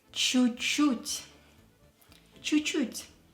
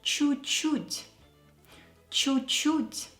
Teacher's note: You can hear that I'm not pronouncing two last letters of the first чуть.